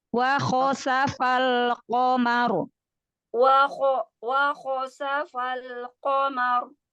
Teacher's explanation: Ro-nya sukunkan ya. Kho adalah huruf isti'la. Tebalkan lagi.